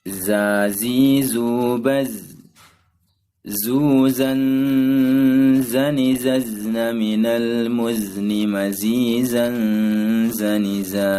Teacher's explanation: makhraj huruf za atau zai adalah ujung lidah menghadap dan mendekat di antara gigi seri atas dan bawah.